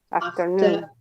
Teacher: the r at the end of a syllable it's not pronounced okay except that we have the following sound as a vowel